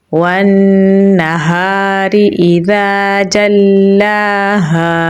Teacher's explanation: खड़ी ज़बर है तो लंबा पढ़ेंगे। हा गले के निचले हिस्से से निकालेंगे। आगे अलिफ मद्दा है तो लंबा पढ़ेंगे तो पढ़ा जाएगा वन नहारी इज़ा जल्लाहा।